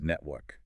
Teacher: >> But in British English, the R is immediately followed by a K, a consonant. So the tongue stays flat.